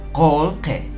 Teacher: Ahora tenemos aquí otro caso y está teniendo nuevamente contacto directo con esta consonante. Así es que esta I se volvería como E y decimos kolke.